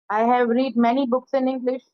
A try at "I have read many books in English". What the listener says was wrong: रीड नहीं, उसको third form में रेड बोलते हैं। स्पेलिंग तो वही रहती है, लेकिन प्रोनाउंसिएशन रेड हो जाता है third form. I have रेड many books in English.